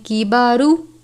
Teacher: را کے اوپر پیش ہے اس لیے را کو پر پڑھتے ہیں